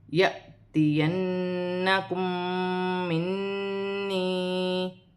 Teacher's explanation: پھر یا ساکن سے پہلے زیر آ رہی ہے تو یا مدہ بن رہی ہے، ایک الف کی مقدار اسے بھی کھینچ کے پڑھا جائے گا، جیسے یأتینکم منی، نون مشدد میں بھی غنہ ہوگا، میم مشدد میں بھی غنہ ہوگا، نون مشدد میں بھی غنہ ہوگا، اور یا مدہ بن رہی ہے، ایک الف کی مقدار سے کھینچ کر بھی پڑھا جائے گا۔